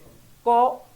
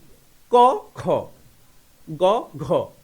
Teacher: তাহলে ক অল্প বাতাস লাগে অল্পপ্রাণ